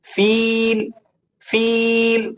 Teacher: باصحاب، باصحاب الفیل، فیل، فا پر کسرہ ہے، اس کے بعد یا ساکن ہے، یا ساکنہ ما قبل مکسور ہو تو ایسی یا کو یا مدہ کہا جاتا ہے، اسے صرف آپ نے ایک دو حرف کے برابر کھینچنا ہوتا ہے۔ فیل، فیل، بس اس سے زیادہ آپ اسے لمبا نہیں کریں گے۔